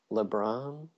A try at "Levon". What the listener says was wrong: No, it's with a V. Like Devon.